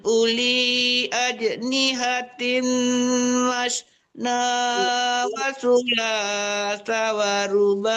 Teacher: Ulinya tidak panjang ya, Bu. Wawnya tidak mati, tidak dipanjangkan U-nya.